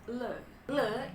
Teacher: le le itu adalah voiced alveolar Liquid lateral